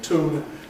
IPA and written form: tuːn (tune)